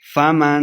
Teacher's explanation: فمن اخفا یعنی غنہ کر کے پڑھیں گے